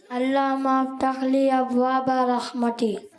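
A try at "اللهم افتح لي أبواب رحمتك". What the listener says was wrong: रहमती, अल्लाहुम्मा अफ्तह ली अब्वाब रहमतिक। ठीक है, रहमती नहीं है।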